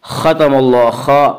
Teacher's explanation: حروف مستعلیہ 7 ہیں جو ہمیشہ ہر حال میں پر پڑھے جاتے ہیں، اس لیے خا کو یہاں پر پڑھیں گے